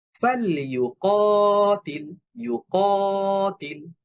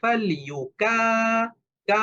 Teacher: এটা ভুল উচ্চারণ হবে, কারণ কফটা মোটা হরফ